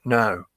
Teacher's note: you can say no in a very high tone. It comes from the back of the throat, you know, just at the top of the larynx.